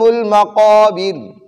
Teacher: را وقف کی وجہ سے ساکن ہو گئی اور اس سے پہلے والے حرف کے نیچے زیر ہے، تو اب ہم اس را کو باریک پڑھیں گے